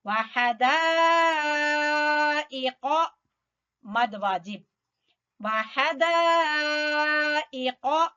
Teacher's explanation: قاف کو پر پڑیں گے، زبان کی جڑ سے ادا ہوگا